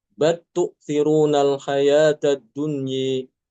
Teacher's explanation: Ya, ini Imam Al-Kisai baca dengan bal tu'thirunal hayatad dunya. Lamnya dimasukkan ke huruf ta, ya.